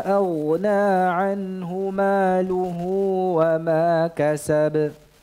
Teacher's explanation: Maluhu dipanjangkan hunya apabila diwasalkan. Ya, dengan kalimat setelahnya atau kata setelahnya. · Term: silah